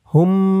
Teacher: হামিম পেশ হুম, হুম গুন্না হবে, ওয়াজিব গুন্না, কারণ হরকতের পরে মিমের উপরে তাসদিদ।